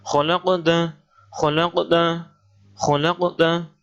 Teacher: Ini bacaan qalqalah sughra, mantul.